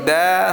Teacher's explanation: huruf dal itu makhrajnya digusi